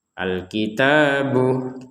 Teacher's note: Al-kitabu, ta-nya juga panjang 2 harokat.